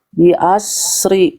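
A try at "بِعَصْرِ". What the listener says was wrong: Bi'ashri. Bi'ash. Beda huruf itu. Yang tinggal masukin ke sini shinnya. Bi'ash.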